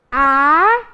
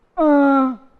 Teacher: O A sai pela boca e o AN sai pelo nariz. Beleza, um som é oral e o outro é nasal.